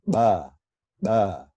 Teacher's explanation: pulling the air in it's an implosive but it's voiced so it's a voiced bilabial plosive but it's implosive in this case instead of explosive · you're pulling the air in it's an implosive but it's voiced so it's a voiced bilabial plosive but it's implosive in this